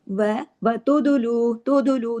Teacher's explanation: दाल पे कलकला करें